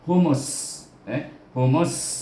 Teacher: Huruf sin juga. Iaitu kita kena idghamkan mim kepada huruf sin. Humus. Humus, dan beranginkan dia, hamaskan dia.